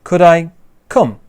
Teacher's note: We stress the verb that comes afterwards.